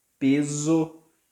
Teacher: When the S is in the middle, like in peso, it turns for this Z sound, like in the S in poison